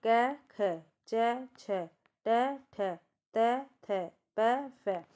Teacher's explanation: पहला और दूसरा वर्ग यानी क ख च छ ट ठ त थ प फ यह होते हैं हमारे अघोष